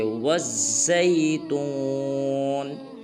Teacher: وا کو زا مشدد کے ساتھ ملائیں گے، بیچ والا الف اور لام نہیں پڑھیں گے، جیسے والزیتون۔